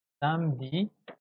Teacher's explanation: la E, on ne la prononce pas